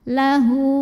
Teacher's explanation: Dan huruf setelahnya bukan hamzah, bukan a, bukan i, bukan u. Maka hak domirnya dipanjangkan dua harokat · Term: mad silah qasirah